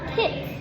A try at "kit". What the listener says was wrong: Kit. Great job.